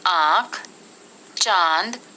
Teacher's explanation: अनुनासिक या चंद्रबिंदु, इसका उच्चारण नाक और गले दोनों से होता है, जैसे आंख, चांद आदि।